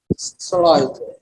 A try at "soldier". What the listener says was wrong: S. Soul. And that D is going to be like a Jerry, like a G. It's going to be G, jers. Soldiers. Yeah, it's not a D. You see this phonic down here? It's one of those really, really, really pain in the beep phonics. That's like Tom and Jerry, right? That's like that big J.